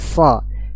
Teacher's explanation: isti'la yang membedakan antara sin dan sad. Ya, pangkal lidah menaik. Jadi suaranya naik.